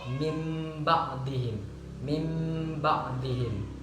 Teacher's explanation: membaca iklab, kedua bibir menempel dengan lemah, yang mana di sini menempel merapatkan bibir, bukan terlalu merapatkan dan juga bukan terlalu merenggangkan.